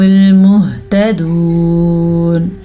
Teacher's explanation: وقف کرتے ہوئے آخری حرف ساکن ہو جاتا ہے تو ہم یہاں پہ نون کو ساکن کر دیں گے۔